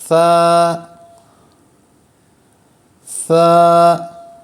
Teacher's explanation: سا پہ ہم نے سیٹی کی آواز نہیں آنے دینی، تو اس کو نرم پڑھنا ہے